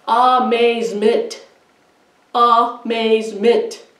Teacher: I think it's more, the stress is more on the second syllable, maze. So we would do unstress, stress, unstress.